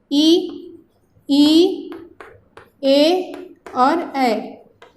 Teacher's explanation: इन स्वरों का उच्चारण जीभ के अगले वाले भाग से होता है। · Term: अग्रस्वर